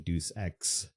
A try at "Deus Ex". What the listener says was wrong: Why do you call it Deuce? It's Deus Ex.